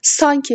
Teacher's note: Sanki sözündə vurğu birinci hecəyə düşür.